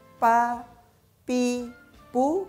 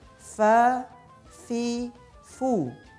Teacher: Membacanya bukan pa, pi, pu, melainkan fa, fi, fu. Terasa hembusan nafasnya. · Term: huruf fa